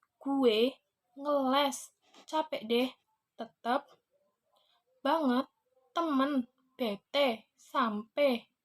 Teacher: pemunculan vokal E sebagai vokal depan, tengah, tegang, dan tidak bulat